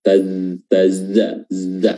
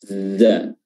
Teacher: huruf zai makhrajnya adalah ujung lidah bertemu ya dengan ujung gigi, atau ujung lidah bertemu dengan gigi atas dan bawah, dan giginya diapit ya, giginya bertemu tapi lidahnya tidak diapit.